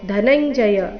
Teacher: ಇಲ್ಲಿ ಧ ಧನಂಜಯ ದ ಬೇಡ ಧನಂಜಯ ಬೇಡ ಧ ಮಹಾಪ್ರಾಣ ರಸ್ವ ಬರಬೇಕು